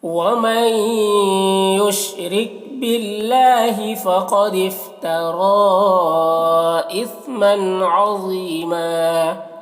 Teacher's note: وَمَن مئی میں بھی ادغام ناقص ہو رہا ہے، غنہ کے ساتھ میں اسے پڑھ رہے ہیں۔ را کو باریک پڑھنا ہے، باللہ اللہ کے لام کو باریک پڑھنا ہے، کھڑا زبر ہے جو الف مدہ کی طرح ہے۔